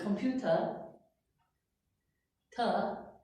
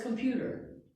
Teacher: they say computer, ta, no R sound. For us, it's computer. We do say the R here.